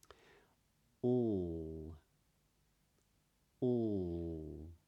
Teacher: The sound feels like it's traveling freely. However, for a dark L, the back of the tongue is raised a little. It's not touching anything, but it's just raised in the back of the mouth.